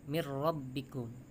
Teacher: nun sukun bertemu huruf ro, hukumnya idgham bila gunnah